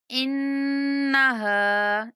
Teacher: ہا کے بعد الف مدہ ہونے کی وجہ سے ہا کو تھوڑا کھینچ کے پڑھیں گے